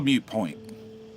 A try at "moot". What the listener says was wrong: keep saying mute. Yeah, it's moot. M-O-O-T.